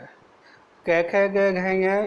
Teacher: कै ख ग घ ङ इनका जो उच्चारण है वो कंठ से होता है, इसलिए इनको कंठ स्वर कहते हैं